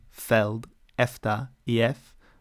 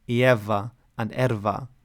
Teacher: it's pronounced f in feld, efta, ef, but v in ieva and erva, i.e. when it's between two open syllables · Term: voiced and unvoiced